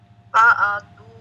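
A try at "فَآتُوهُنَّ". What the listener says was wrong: Panjang A-nya.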